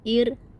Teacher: Ro sukun didahului huruf berharakat kasrah kita baca tipis.